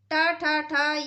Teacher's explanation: इनका उच्चारण स्थान मूर्धा से होता है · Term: मूर्धन्य